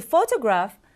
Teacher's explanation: photograph fa is stressed toe unstressed and graph also un unstressed but when it comes to photographer